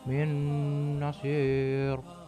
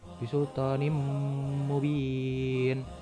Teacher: Idgham bi ghunnah yaitu jika nun mati atau tanwin bertemu dengan huruf ya, nun, mim, waw atau yang biasa kita sebut dengan yanmu, maka harus dibaca dengan idgham disertai dengan suara dengung di hidung